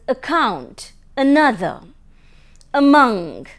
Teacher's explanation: The vowel a as in account, another, among, etc., which is present in the central region just below the half open position.